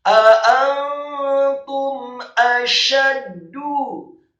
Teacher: A'antum, setelah nun yang sukun bertemu dengan huruf ta, hukum bacaan adalah ikhfa, kemudian taknya dibaca dhammah 1 harokat, dan mim yang sukun bertemu dengan huruf alif, hukum bacaannya adalah izhar syafawi, dibaca jelas